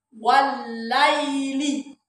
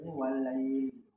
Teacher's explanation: kalau wasol ya berarti tidak dipanjangkan. Artinya tidak dipanjangkan, dipanjangkannya 2 harokat saja. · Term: madlin